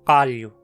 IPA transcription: qaʎʊ